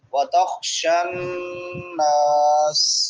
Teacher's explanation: النَّاسَ، وَتَخْشَن شین حروف شجریہ میں سے، شان نون مشدد ہے، نون مشدد پہ غنہ کریں گے، ایک الف کے برابر آواز کو ناک میں لے کے جائیں گے